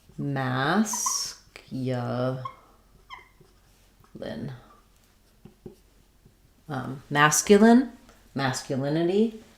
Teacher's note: when you're doing masculine, it changes to stressing on the mask.